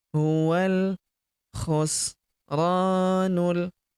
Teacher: Huruf ro kita panjangkan dua harakat karena terdapat tanda alif di depannya · Hualf wa langsung lompat masuk ke huruf lam yang berharakat sukun. Alifnya tidak dibaca atau dianggap tidak ada hamzah wasal atau hamzah penyambung.